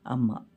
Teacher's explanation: ಯಾವುದೇ ಪ್ರಮೇಯ ಇಲ್ಲದೆ ಬಾಯಿ ತೆಗೆದರೆ ಸಾಕು ಕೇಳಿಸುವ ಅಕ್ಷರ ಅ ತೆರೆದ ಬಾಯನ್ನು ಮುಚ್ಚಿದಾಗ ಮ ಆಗುತ್ತೆ